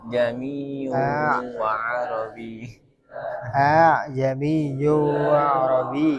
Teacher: membacanya bukan jami, bukan jelas seperti itu, tapi ya hamzah yang kedua itu ditashil. Tashil itu dimudahkan. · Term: hamzah tashil